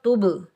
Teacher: با ساکن ہے اور با حروف کلکلہ میں سے ہے تو با پر ہم کلکلہ کریں گے اور ڈبل ساؤنڈ آئے گا، ٹکراؤ پیدا ہوگا ، تب تب تب نہیں کریں گے، تب کریں گے اور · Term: کلکلہ صغریٰ